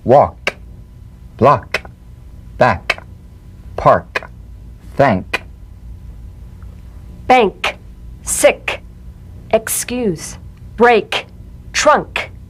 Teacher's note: the unvoiced tongue back plosive consonant with the tongue in the g position let the tongue spring away in the soft unvoiced click of the k drum beat feel a crisp tap and a pulsation in the back of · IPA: /k/